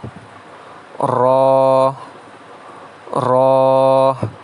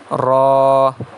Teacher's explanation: زبان کے کنارے کی پش جب ثنایا، رباعی اور انیاب کے مسوڑوں سے لگے، اس سے را ادا ہوتا ہے